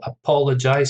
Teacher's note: Stress on the second syllable. Apologize, 4 syllables.